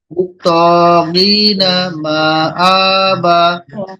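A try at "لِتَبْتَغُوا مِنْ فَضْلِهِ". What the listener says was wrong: হ্যাঁ, আবার বাদের টান কম হলো কেন? এখানে একালে টান দিতে হবে।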